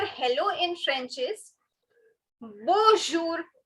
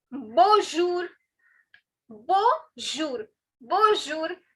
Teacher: Now, as you can see, this N, I'm not stressing on this N because it has a nasal sound